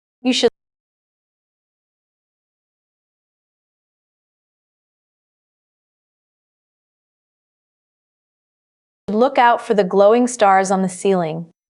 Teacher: use a smooth rising intonation on the word stars